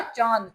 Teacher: जो अनुनासिक स्वर होते हैं उनमें मुख से ज्यादा आवाज निकलती है नाक से कम। यानी मुख और नाक दोनों का इसमें प्रयोग होता है।